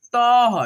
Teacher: जैसे यहाँ पे देखो म पे लगा है दो विसर्ग तो हम लोग पढ़ेंगे मह, ठीक है, म तो पढ़ेंगे ही, इसके साथ में ह का भी उच्चारण निकालेंगे